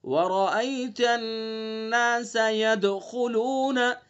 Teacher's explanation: ید دال ساکن ہے تو دال کے اندر قلقلہ کریں گے